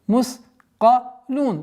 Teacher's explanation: При остановке фатха переходит сукун. И долгота, причинная долгота в размере двух огласовок, огласовки даммы.